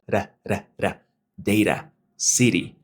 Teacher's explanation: la lengua simplemente sube, hace el golpeteo